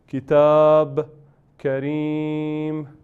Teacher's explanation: se hace pausa y tanvin se borra. Solo queda un sukun